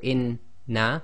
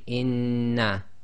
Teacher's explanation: So if they go inna, there's no shadda. If you say inna, we know there's a shadda taking place, i.e. gemination.